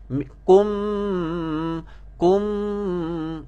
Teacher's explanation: Mim dengung dua harakat pun vibrate juga. Kum. Okey, dengung ni keluar daripada hidung.